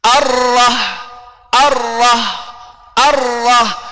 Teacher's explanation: jadi getarannya berapa paling maksimum dua kali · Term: bergetar